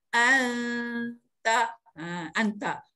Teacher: Jadi kita kena dengungkan nun mati ke dalam huruf ta itu, sembunyikan dia. Sembunyi beserta dengan dengung ya. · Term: ikhfa